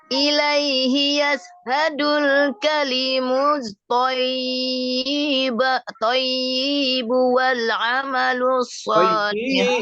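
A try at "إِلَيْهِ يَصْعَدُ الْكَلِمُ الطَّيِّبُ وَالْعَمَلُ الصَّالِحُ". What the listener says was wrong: Iya, jangan dibaca thayyibu, itu kan pendek kan, nggak ada huruf madnya. Ilaihi yas'adul kalimut thayyibu wal amalus shalih.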